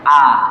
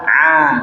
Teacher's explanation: Hamzah itu dari pangkal tenggorokan a kalau Ain dari tengah tenggorokan a gitu bedain antara a dengan A itu namanya tartil ya